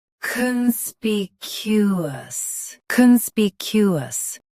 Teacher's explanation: Stress spe. Keep con soft and cue clear.